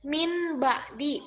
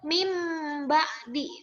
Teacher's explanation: karena nun mati menghadapi ba Jadi dibacanya jadi mim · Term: iqlab